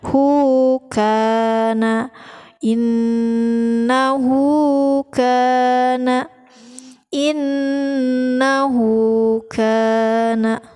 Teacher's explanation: Nah, karena kebetulan di sini bukan hamzah, maka mad sillah qasirah, mad sillah qasirah itu hak dhamir bertemu dengan huruf selain hamzah, gitu ya. Dipanjangkan selama 2 harakat.